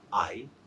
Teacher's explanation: And its phonetic transcription, it's like this I. Here, we don't have any consonant sound. We have only one vowel sound, in fact, one diphthong, that's I. We call it a syllable.